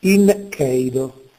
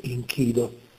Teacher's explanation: il gruppo e seguito da i quindi due vocali palatali anteriori si riduce a una sola vocale che è la i con quantità lunga